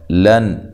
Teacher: یہ لام باریک ہے اور نون تنوین کا اظہار ہے، اظہار حلقی اس کو کہا جاتا ہے۔